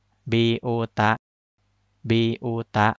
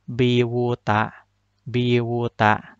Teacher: Yang dibaca hamzahnya, bukan dibaca wawunya ya. Biuta, tidak dibaca biwuta, biwuta.